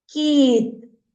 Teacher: якщо ми поміняємо звук голосний в слові кит на і то вийде в нас слово яке кіт і звук к перетворюється на м'який приголосний звук